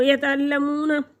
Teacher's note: वाव साकिन से पहले लफ्ज़ पर पेश है तो वह मद्दा है, एक हरकत के बराबर खींच कर पढ़ेंगे